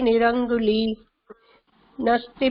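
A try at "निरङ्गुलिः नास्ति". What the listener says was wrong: அங்குலிஹி அந்த விசர்க்கம் படிக்கணும். அதுக்கப்புறம் நாஸ்தி.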